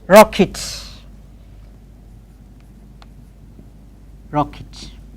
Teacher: Final et is normally pronounced it.